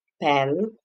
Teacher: the consonant P, which is a voiceless. Okay, and the place of articulation is bilabial.